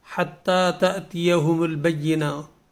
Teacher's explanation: حتی جو تا ہے اس کو ہم نے کھینچنا ہے ایک الف کے برابر